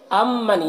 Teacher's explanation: یہاں پر میم ساکن کے بعد میم ہے تو میم کو میم سے ملا کر غنہ کے ساتھ پڑھیں گے، اس کو ادغام شفوی کہتے ہیں۔